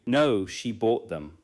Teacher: The main verb receives contrastive stress.